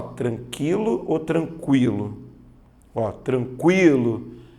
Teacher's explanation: veja que a letra u é pronunciada ou seja ela é uma semivogal